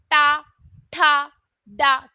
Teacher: तो हमारी जो जीभ है जो टंग है वो थोड़ी से पलट जाते है वोस स्थान को हम कहते हैं मूर्धा